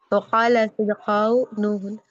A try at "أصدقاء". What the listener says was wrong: أصدقاء. خا نہیں قا.